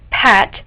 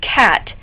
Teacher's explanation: So for instance, the initial sounds in pat and cat differ only in where they are formed. So p is produced by the lips, while k is produced by touching the back of the tongue to the roof of the mouth